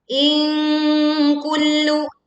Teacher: In kullu ini bacaan dengung dan suara yang terdengar tipis ya. In kullu tekan huruf lam bertasydid.